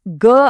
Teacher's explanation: ಸುಮ್ನೆ ಟ್ರೈ ಮಾಡಿ ನೋಡಿ ಕ ಅಂತ ಹೇಳಿ ಈಗ ಗ ಅಂತ ಹೇಳಿ ಗಂಟಲಿಗೆ ಕೈ ಇಟ್ಕೊಂಡ್ರೆ ಗ ಹೇಳುವಾಗ ಒಂದು ಕಂಪನ ಆಗುತ್ತಲ್ಲ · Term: ಮೃದು ವ್ಯಂಜನ